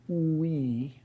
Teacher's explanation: W uh is a glide that corresponds to the vowel oo. It's a version of the vowel oo said very fast basically um in which your tongue is bunching up toward the back of your mouth reaching toward the top of the back of your mouth and your lips are rounding. · So back then we were doing group exercises like uh saying oo we over and over again and when you did that you you discovered that your lips were rounding and unrounding but also that your tongue was shifting from the back of your mouth to the front of your mouth